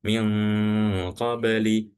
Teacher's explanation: dengungnya nun sukun atau dengungnya tanwin itu dibaca samar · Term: ikhfa